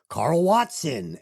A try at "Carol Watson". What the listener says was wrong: I have to pronounce, it's not Carl, it's Carol.